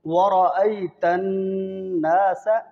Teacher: اس لیے کہ را کے اوپر زبر ہے اور نون مشدد ہے، نون کے اندر غنہ ہوگا